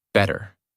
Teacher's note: the mouth does not stop strongly on the tea. The tongue touches quickly and moves on. That is why it sounds softer.